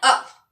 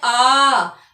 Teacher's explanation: क्योंकि हम बोलते हैं अ, और अगर हम दीर्घ स्वर बोल देते हैं आ, तो उसमें हमें ज्यादा समय लगा।